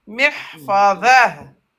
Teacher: Ta se prononce comme ha avec soukoun.